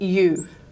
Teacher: the first one is a palatal approximant and that's written as you okay as in the word you